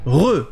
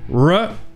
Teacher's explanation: Déjà, il y a une différence évidente entre la lettre R en anglais et la lettre R en français. Déjà, en français, on prononce ça re. On a ce son qui racle, re. Et bien en anglais, ça sera la même chose, mais sans le frottement. Donc, au lieu que ça soit re, c'est re.